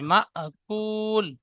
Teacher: মা হামজার উপর সাকিন এসেছে, যে ঝাটকা দিয়ে পড়তে হবে